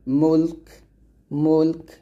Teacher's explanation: কাফটাকে সাকিন করবেন, মুলক মুলক, এরকম কাফের একটা মানে বাতাস নিয়ে আসবেন। আবার বলেন তাবারাকাল্লাযী বিয়াদিহিল মুলক।